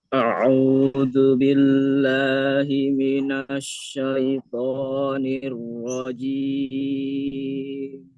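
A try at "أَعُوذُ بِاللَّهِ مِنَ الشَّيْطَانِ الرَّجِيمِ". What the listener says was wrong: Hamzahnya dibuka lagi, Pak. A.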